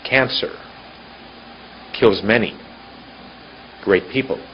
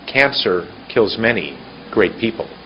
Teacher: all I've done is shorten the time in between the clumps